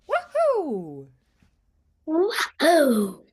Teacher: Now we're going to go high to low on wahoo.